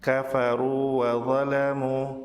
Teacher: Mat wawu pada akhir kata kafaru bertemu dengan wawu di awal kata wa zalamu tidak dilebur, sebab jika dilebur maka matnya akan hilang.